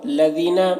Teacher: لذینہ یا مدہ ہے، ایک الف کے برابر کھینچیں گے